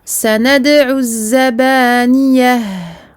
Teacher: Je ne prononce pas le lam ici, car le za est une lettre shamsiyya, donc solaire. Le za est mushaddada, donc doublé.